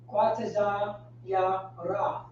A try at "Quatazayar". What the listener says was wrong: So Quatazayar, right? So the ya is in there, right? There's a letter Y in there, right? Not letter Y, but you know the ya in the middle.